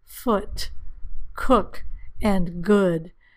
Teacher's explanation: a little little more relaxed than the ooh sound the lips are not as round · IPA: /ʊ/